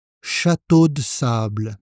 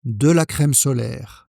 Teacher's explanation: Donc attention à la prononciation, on ne prononce pas complètement de